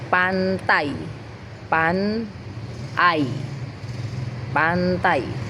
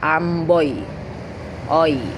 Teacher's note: Ini bukan dua vokal terpisah ya, tapi satu bunyi yang geser dari satu vokal ke vokal lain. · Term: diftong